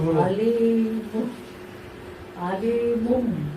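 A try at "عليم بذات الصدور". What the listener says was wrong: হুম, গুণনাটা হচ্ছে না 2 সেকেন্ড স্থায়ী হবে গুণনা। আলিমুম বিজাতিস সুদূর। আলি, এখানে লামের নিচে যে জেরের পাশে জজমালা ইয়া একালি বাদ। আলিমুম বিজাতিস সুদূর। আলিমুম বিজাতিস সুদূরি।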